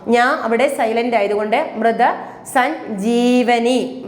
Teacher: ഞായും ജ ഇങ്ങനെയാണ് മൃതസഞ്ജീവനി. അപ്പം ഞ അവിടെ സൈലന്റ് ആണ്, ജ അവിടെ ഫോഴ്സ് ചെയ്ത് പറയുക. അപ്പം മൃതസഞ്ജീവനി, ജീവനി എന്ന് ഓർക്കുക.